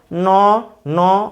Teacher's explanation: মূর্ধন্যের সঙ্গে অধ্বনি যুক্ত হয়েছে, এই অধ্বনি যুক্ত হয়, মূর্ধন্য উচ্চারণ হচ্ছে ন, জিভটা উল্টে গিয়ে ন উচ্চারিত হবে ন ন অধ্বনি উচ্চারিত হচ্ছে।